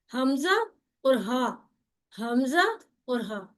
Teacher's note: तो ये दोनों हरूफ हलक के नीचे वाले हिस्से से अदा होते हैं। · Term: इंतहाई हलक